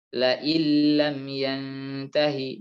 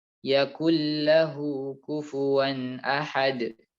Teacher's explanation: nunnya sudah hilang sama sekali. Sudah menjadi huruf lam bertasydid. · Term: idgham